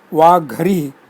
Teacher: Paravarnaha Ha changes to Gha, the fourth letter, aspirated soft of the same Vargaha as of the previous Ga.